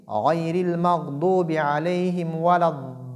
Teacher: il faudrait que les mads sortent du jawf, c'est-à-dire de la gorge et de la bouche, et non du nez. Le nez, c'est pour les ghunna.